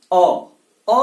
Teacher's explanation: अ बोलेंगे तो जीभ बिल्कुल नहीं हिलेगी आपकी जिह्वा, अ कहीं भी टच नहीं करेगी आपकी जिह्वा